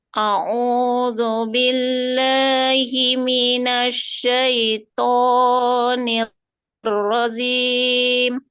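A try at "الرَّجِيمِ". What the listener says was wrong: Bukan zim, jim, jim, nirrajim, jim, nirrajim, jim, nirrajim. A'udzu billahi minasy syaithanir rajim.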